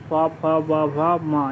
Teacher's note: तो फ का उच्चारण स्थान जो है वो है ओष्ठ। प, फ, ब, भ, म यानी कि ये पांचों जो है वो ओष्ठ होता है